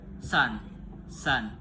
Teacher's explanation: Nama bunyinya itu voiceless alveolar fricative